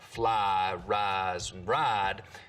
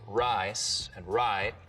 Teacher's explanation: some southerners smooth the diphthong in words like fly rise and ride but use diphthong in rice and right here in the piney woods belt we're going to smooth them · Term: full price smoothing